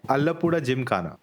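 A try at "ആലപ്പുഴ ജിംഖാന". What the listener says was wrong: very hard to pronounce Ra for non-Malayali people. Alappuzha. Ra.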